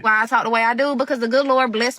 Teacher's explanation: the vowels are pronounced kind of long and sound like they're split into two syllables